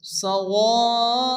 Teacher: হরফে মাদের পরে হামজা একই সাথে মধ্যে আসছে মধ্যে মুত্তাসিল চার আলিফ টেনে পড়তে হবে